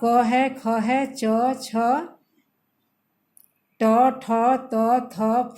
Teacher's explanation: इन वर्णों के उच्चारण में स्वर तंत्रों में गूंज उत्पन्न नहीं होती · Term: अघोष